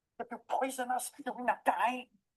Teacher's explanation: However, when we raise or pitch a rising intonation, we ask a question